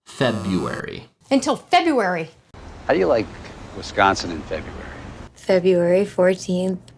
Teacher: the R in the middle of a word is being omitted to make the pronunciation a little bit easier